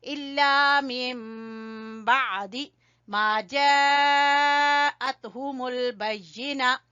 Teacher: जब नून साकिन के बाद बा आ जाए तो वहां पर नून की आवाज को मीम में बदल कर पढ़ते हैं, इसको बोलते हैं इकलाब।